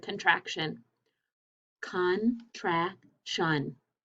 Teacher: how many syllables in the word contraction contraction three and i hear shun at the end